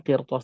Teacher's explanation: Di sini qaf adalah huruf isti'la, maka berbeda posisinya, maka ra dalam keadaan sakin ini dibacanya tebal.